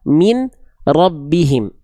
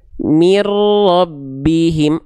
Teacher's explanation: bunyi an-nya di sini dileburkan ke huruf ro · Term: idgham bila gunnah